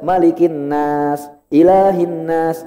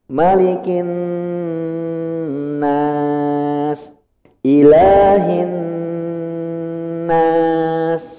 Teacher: Artinya adalah ketika bapak dan ibu melihat mim dan nun ada tanda tasdid, tanda huruf W, itu jangan buru-buru bacanya, ditahan dulu. Karena ini tingkatan gunnah tertinggi, harus lama.